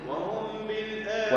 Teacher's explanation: وهم بالآخرة وهم الميم عند الباء شو حكمها الميم عند الباء إخفاء مع الغنة إخفاء الميم مع غنة من الخيشوم · الذين لا يؤتون الزكاة وهم بالآخرة بالآخرة راء ما يش بالآخرة فخم الراء لأنها مفتوحة